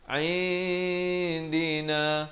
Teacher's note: Nun mati yang kosong ini ikhfa hakiki, kena panjangkan 2 harakat dengan samar bunyinya.